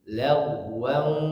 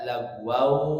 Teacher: tanwin menghadapi waw hadirin dimasuk ke idgham bigunnah, maka masukkan ke hidung